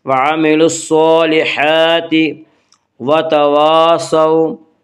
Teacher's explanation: وعاملوا الصالحات وتواصوا، الف مدہ، الف ہمیشہ مدہ ہوتا ہے، الف سے پہلے ہمیشہ زبر ہوتا ہے، الف مدہ کو ایک الف کے برابر کھینچ کر پڑھیں گے